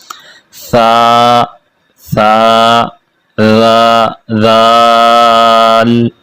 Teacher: ثا، ذال دونوں کو پڑھتے وقت زبان کو تھوڑا سا باہر نکال کے پڑھیں گے تو ان دونوں کے مخرج یہی ہیں، اور اسی طریقے سے ان کو پڑھنا ہے۔